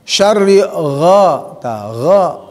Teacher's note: Gha ya, adnal halqi di atas tenggorokan ya